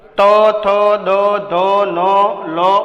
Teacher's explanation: દંત્ય એટલે કે જેનું ઉચ્ચારણ કરતી વખતે જીભ છે દાંતને સ્પર્શ કરીને જે ધ્વનિ ઉત્પન્ન થાય છે તેને દંત્ય વર્ણ તરીકે ઓળખવામાં આવે છે.